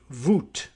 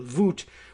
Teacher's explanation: W's being v's and vowels being pronounced as they are in European language